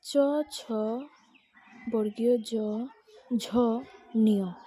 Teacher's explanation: এই 5টি বর্ণ উচ্চারণের সময় জিহ্বা তালুতে স্পর্শ করে, তাই এদেরকে তালব্য বর্ণ বলে।